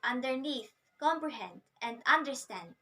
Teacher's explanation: consists of two unstressed syllables followed by a stressed syllable